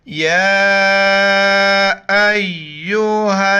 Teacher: یا کے اوپر کڑا زبر ہے اور مد ہے، 4 الف کی مقدار اوپر کھینچنا ہے